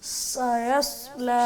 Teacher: سین کو باریک، سواد کو موٹ.